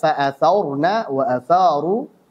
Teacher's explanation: Kesalahan pertama pada huruf tha adalah membacanya dengan tebal.